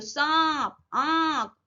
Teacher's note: नाक से साउंड आएगी और गले से आएगी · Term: अनुनासिक